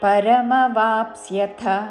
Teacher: పరమవాప్ అని ముందు పలికి తర్వాత స్యథ చివరిలో మహాప్రాణాక్షము థ హ్రస్వము